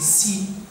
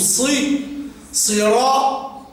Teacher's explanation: مخرج السين طرف اللسان مع منبت الثنايا السفلى